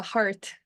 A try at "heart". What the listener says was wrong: A kéo dài em. A kéo dài chứ phải kéo dài.